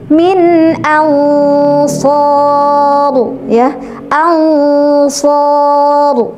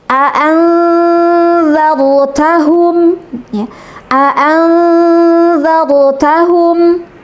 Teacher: maka dibacanya harus samar suara nunnya, samar antara izhar dan idgham